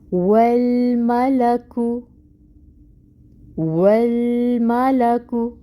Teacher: واو کے لیے ہونٹ کول اور زبر کی حرکت 1 کاؤنٹ۔ واو کو لام کے ساتھ ملائیں گے، لام کو ہلانا نہیں ہے، لام میں توسط آئے گا، آواز جاری رہے گی۔ میم پہ زبر کی حرکت ہے 1 کاؤنٹ، لام زبر 1 کاؤنٹ، کاف پہ پیش 1 کاؤنٹ۔